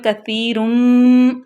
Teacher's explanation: دو الٹے پیش کے بعد میم آ گیا تو یہاں پہ ادغام کا قاعدہ لاگو ہوگا